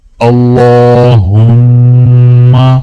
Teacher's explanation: اللہ کے نام کو موٹا پڑھیں گے اور میم کے اوپر غنہ کریں گے